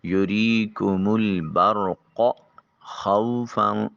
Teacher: خا بھی جو ہے یہ وسط حلق سے ادا ہوگی